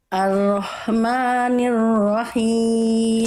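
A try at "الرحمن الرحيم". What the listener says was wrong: himnya kurang arahmanirahim e ha kecil dilafalkan dari tengah-tengorokan berbisik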